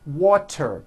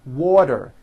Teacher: the t turns into a d and the whole word is voiced